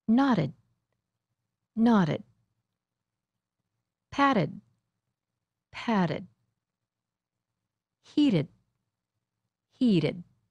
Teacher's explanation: the d and t sound alike when they happen between two vowels you might hear that the vowel is a little longer when